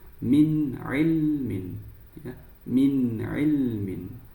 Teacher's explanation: Idhar halqi nun sukun dibaca dengan jelas.